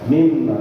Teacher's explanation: It's a complete idgham. Idgham with complete gunna. So it overcomes it completely. Mimma, but there's a gunna.